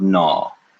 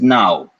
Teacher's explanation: You can either say aw or you can say ow, and you will hear both.